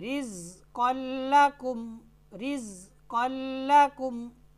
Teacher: لام کے ساتھ ملا دیں گے، ایسا ملائیں گے کہ غنہ نہیں ہوگا